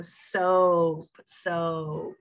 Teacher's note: we only say the first vowel the o and we give it that long o sound